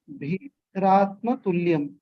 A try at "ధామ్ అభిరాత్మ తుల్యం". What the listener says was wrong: ధామ్ అభిరాత్మ తుల్యం. ధామ్ ని సెపరేట్ చేయాలి, అభిరాత్మని కలిపేయాలి. యాక్చువల్ గా ధామ్ అభిర్ ఇస్ వన్ వర్డ్, కానీ ధామ్ అభిరాత్మ తుల్యం మనం పాడేటప్పుడు అలా అంటాం.